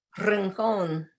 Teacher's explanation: Spanish has, say, the trilled R, like in rincón